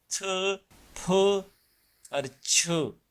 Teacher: मतलब सांस को साथ मिला के आवाज के अदा करते हैं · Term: एस्पिरेशन